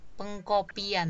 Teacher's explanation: Nah, kalau kita lafalkan kan pengkopian. Jadi ada luncuran y